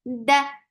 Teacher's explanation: Da is very sharp. No flow of sound whatsoever.